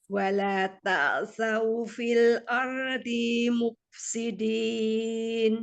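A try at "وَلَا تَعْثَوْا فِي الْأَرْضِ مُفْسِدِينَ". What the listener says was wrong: Nah, di jangan dipanjangkan bun ini. Wala ta'thaw fil ardi langsung ardi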